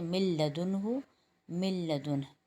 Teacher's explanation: اب یہاں پر کیونکہ نون ساکن کے بعد لام آ رہا ہے تو لام کے اوپر ادغام بلا غنہ ہوگا، یعنی ادغام تو کریں گے، یعنی لوگ لفظ کو ملائیں گے تو، لیکن غنہ نہیں کریں گے